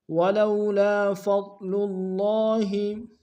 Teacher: ولولا میں لو میں واؤلین بغیر کھینچے پڑھیں گے، لام کے ساتھ الف مدہ کے انداز میں کھینچیں گے، فا کو ضاد کے سامنے آئیں گے، ضاد کو موڑ ادا کریں گے، لام کو لفظ اللہ کے لام کے سامنے آنا شدہ زور دیں گے، کھڑا زبر ہے کہ انداز میں کھینچیں گے۔